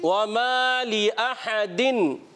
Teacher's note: वाव की अदायगी प्यारे बच्चों होठों की गोलाई से, माँ अलिफ मद्दा है, एक अलिफ खींच कर अदा करेंगे। लिअहदिन में हा की अदायगी क्लियर रखेंगे, हमजा इससे पहले आया है, इसको हमने वाज़े करना है।